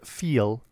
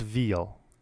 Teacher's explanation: English has a voiceless labiodental fricative f and a voiced labiodental fricative v, as in the words feel and veal.